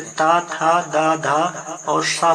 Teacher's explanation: जीभ की नोक ऊपरी दांतों को स्पर्श करे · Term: दंत व्यंजन